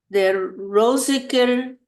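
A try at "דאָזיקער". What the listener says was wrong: Doziker, it's a Dalet. Doziker. It's a Dalet.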